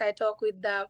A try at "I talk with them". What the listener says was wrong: Again, we have that problem with the th sound, right? That she pronounces her the as a d, and she pronounces her th as a t, and so probably not a full range.